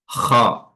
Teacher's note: Bil khati'ah di sini huruf kha, makhrajnya adalah adnal halqi atau tenggorokan bagian atas.